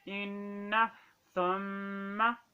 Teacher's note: اس نون کے اوپر شد ہے، تشدید ہے، لہذا اس نون کو بھی ہم ایک الف کے برابر لمبا کر کے پڑھیں گے